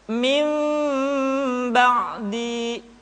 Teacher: ketika mengucapkan huruf mim, kedua bibir kita agak sedikit direnggangkan, tidak sempurna rapat. · nun mati dan tanwin dirubah menjadi huruf mim. Ditahan suaranya, tidak boleh tergesa-gesa. Kemudian diucapkan mim dengan cara yang samar. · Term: iqlab